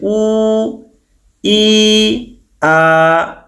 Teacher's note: উ শব্দটা বের করার জন্য, ই শব্দটা বের করার জন্য, আ শব্দটা বের করার জন্য আমাদের মুখের কোনো অঙ্গের সাথে কোনো অঙ্গ স্পর্শ হচ্ছে না